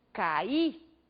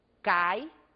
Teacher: O I foi pronunciado com bastante intensidade. Temos aí uma vogal tônica. Quando dizemos, por exemplo, cai, esse mesmo I agora é pronunciado de uma forma menos intensa.